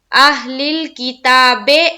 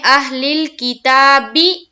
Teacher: بی کو زیر کی حرکت کے ساتھ معروف پڑھیں گے، مجہول سے بچیں گے، یعنی کہ اہل الکتاب، یہ مجہول ہے، اور اگر ہم پڑھتے ہیں اہل الکتابی تو یہ معروف ہے، تو ہمیں معروف پڑھنا ہے، مجہول سے بچنا ہے۔